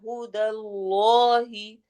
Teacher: جلالہ کے دونوں لام موٹے ہوں گے